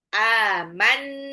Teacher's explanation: Nunnya itu kayak mau lompat ke makhrajnya ta.